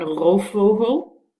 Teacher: you actually blend the two together, the f and the v